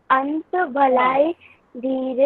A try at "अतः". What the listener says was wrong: नहीं अतः, अंत नहीं अतः, अतः